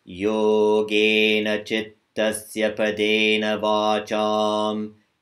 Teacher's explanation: And I want you to also remember with the next mantra, dental, the tip of your tongue, whenever the tip of the tongue is being used, comes to the teeth, and hold your breath while you're reciting. There's no aspiration in any of the sounds, any of the syllables.